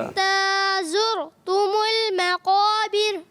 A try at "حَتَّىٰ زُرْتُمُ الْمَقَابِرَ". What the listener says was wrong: آپ نے پڑھا ہے اور صحیح ہو گیا ماشاءاللہ.